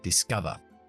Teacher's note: Es un verbo. Acentuamos en la segunda sílaba. Discover. Y termina en D.